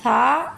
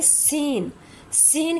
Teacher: سا ایک نہایت نرم سی آواز ہے اور اس کے مقابلے میں سین کی آواز میں سیٹی کی سی آواز پائی جاتی ہے۔ دیکھنے میں دونوں سا اور سین ایک جیسے لگتے ہیں، ساؤنڈ ایک جیسا فیل ہوتا ہے، لیکن عربی میں ہم اسے نرمی سے سا اور اسے سیٹی سے سا کی آواز سے پڑھیں گے۔